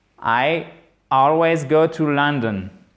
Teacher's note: d'accord le a long on va dire qu'il est ici d'accord c'est entre le a et le O français mais c'est tout de même plus proche du a